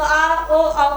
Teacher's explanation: तो ऊ का ओष्ठ से होता है, आ का कंठ से होता है। तो आ ओ आओ का उच्चारण स्थान कहाँ से हुआ, कंठ ओष्ठ से।